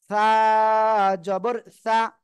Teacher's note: জিহ্বার আগাটাই সামনের উপরে দুই দাঁতের আগায় লাগাবেন, লাগিয়ে হালকা বাতাস বের করে উচ্চারণ করে দিবেন, এমনিতে হয়ে যাবে অটোমেটিক।